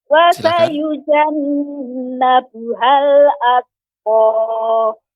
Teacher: tak yang sukun ketika disukunkan itu adanya hamas sedikit ya, adanya sedikit desis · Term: tak sukun